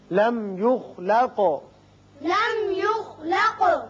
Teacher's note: میم پر اظہار ہوگا، خا پر پڑھیں گے، قاف پر قلقلہ